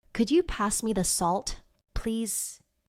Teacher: In fast English, could you often becomes could ya.